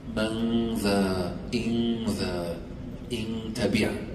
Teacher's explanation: Now if I'm saying من ذا إن ذا, the ذال is a soft letter. Soft letter, then the غنّة comes out soft.